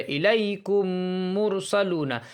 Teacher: میم کو میم سے ملا دیں گے اور غنہ کریں گے۔ غنہ یعنی ناک میں تھوڑی دیر آواز کو روکیں گے۔ یہ جو غنہ ہوگا تو غنہ کرتے وقت دونوں ہونٹ ملیں گے۔ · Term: ادغام شفوی